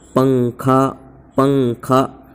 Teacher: اخفاء زبان کی نوک تالو سے کچھ ہٹا کر پڑھیں گے۔